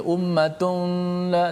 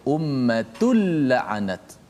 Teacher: idgham bila gunnah ialah idgham tanpa dengung. Dia tidak ada dengung. Huruf dia ada dua sahaja, lam dan ra.